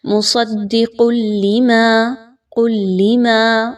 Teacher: تنوین کی آواز کو لام کے ساتھ ملانا ہے لیکن غننے کے بغیر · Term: بلا غنہ